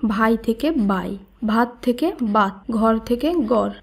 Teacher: সঘোষ মহাপ্রাণ বর্ণ বঙ্গালী উপভাষায় সঘোষ অল্প প্রাণ রূপে উচ্চারিত হয়।